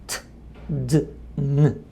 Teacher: Pero en inglés esos tres sonidos son alveolares. La lengua se mueve un poquitito hacia aquí atrás en donde está la alviola rich que se llama en inglés y se pronuncia t d n.